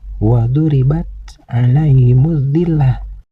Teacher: wribat alaiimillah pada bacaan ini ada huruf ro yang berbaris kasrah huruf ro yang berbaris kasrah ini harus dibaca tarkik yaitu dibaca tipis